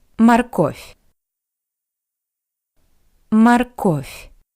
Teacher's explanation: consonant v at the end of this word sounds like a paired voiceless consonant f